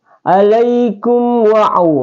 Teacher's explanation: kalau mim sukun bertemu dengan waw maka dia adalah izhar syafawi. Dibaca jelas terang tanpa dengung